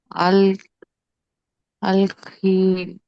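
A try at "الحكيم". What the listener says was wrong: అల్ హకీమ్. హంజతుల్ వసల్. గొంతు నుండి వచ్చే అక్షరం ఇది. హురూఫ్ హలకి. హా పైన శ్రద్ధ లేదు, ఇది కూడా మీరు చెప్పాలి. చక్కగా చదవాలి.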